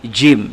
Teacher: Tengah-tengah lidah naik ke atas, ke langit-langit.